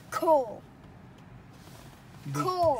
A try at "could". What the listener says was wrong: And the L is silent in this one, so maybe you leave the L out.